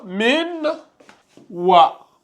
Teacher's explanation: on prononce pas clairement, on fait la liaison